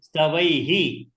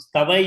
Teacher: when you have visarga at the end of I, should say he.